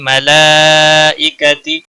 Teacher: مد متصل ہے، 5 الف کے برابر کھینچ کر پڑھیں گے